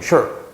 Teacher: 중국식으로 보면 sure 이런 식으로 짧게 끊어지거든요. 즉, 요 글자가 있으면 그냥 짧게 끊어라 이런 뜻으로 이해하시면 되는 거예요.